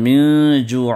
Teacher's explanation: من جوع میں اخفا ہے جو ناک سے آپ نون کا ساؤنڈ چھپا کر ادا کریں گے. اور جو من عین جوع، عین کی ادائیگی ہے.